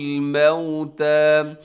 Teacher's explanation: मीम ज़बर वाव मऊ, यहाँ होठ अपने गोल कीजिएगा। ये वाव लीन है, वाव से पहले ज़बर हो वाव लीन होती है, वाव साकिन से पहले पेश हो तो वाव मद्दा होती है।